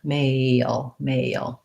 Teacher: I might actually have A and then a Y sound, a schwa sound, and an L sound, male. When I go quickly, I'm not necessarily saying male with all those sounds.